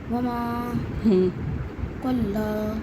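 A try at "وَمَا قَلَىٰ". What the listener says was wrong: قلا نہیں ہے، اس کو جلدی پڑھنا ہے. قلا قلا صرف کھڑا زبر کو کھینچنا ہے. وما قلا. اس کو جلدی پڑھنا ہے اور ساکن کا کیا کام ہے؟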